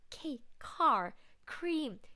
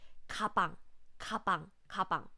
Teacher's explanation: A lot of air are coming out. But when you pronounce the Korean 기억, we don't use that much air. Use less air with lower pitch.